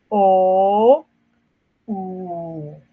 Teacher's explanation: Los posteriores, la lengua retrocede hacia el velo del paladar.